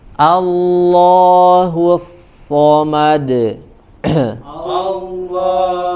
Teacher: huruf Shad ya huruf Shad yang memiliki sifat saofir [Tertawa] allahahu jelaskan desisannya tajam suaranya ya karena disebabkan dayiqul makhraj sempitnya makhraj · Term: sifat sofir